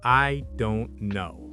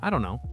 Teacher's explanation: The pitch drops, the words blend, and suddenly you sound natural.